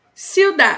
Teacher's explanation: um pequeno sopro no de